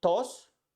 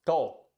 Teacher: letter S is reduced to a slightly hey sound at the end of a syllable or a word. So the word, for example, tos, which means cough, it becomes to.